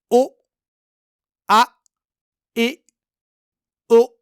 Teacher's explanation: حمزہ کی آواز کو اچانک روک لینا ہے یا حمزہ کی آواز کو اچانک کاٹ دینا ہے اس طرح ا۔ اسی طرح جہاں جہاں بھی حمزہ ساکن ہوگا وہاں وہاں اسے جھٹکا دے کے پڑھنا ہے، جیسے یہاں ای، اسی طرح یہاں بھی او ا ای او۔